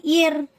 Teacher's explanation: கெசரா இருந்துச்சுன்னா அந்த ராவை வந்து நம்ம வந்து மெல்லினமா உச்சரிக்கணும்